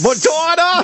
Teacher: Every syllable is as loud as possible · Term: over pronunciation